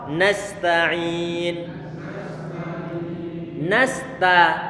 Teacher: Karena huruf sin dia punya sifat rikhawah.